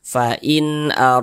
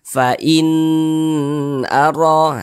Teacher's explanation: itu jangan jangan dipanjangkan karena dia jelas dan tidak berdengung makanya nunnya kita baca jelas kemudian tidak berdengung jadi kita baca pendek